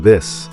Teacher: Now, for the harder sound, like in this, your tongue presses a little harder and your vocal cords vibrate